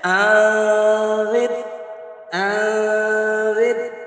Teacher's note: نون کی آواز کو ناک میں گم کریں گے، مخفی کر دیں گے، چھپا دیں گے، زبان کو اوپر تالو کے ساتھ لائے بغیر، ٹچ کیے بغیر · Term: اخفا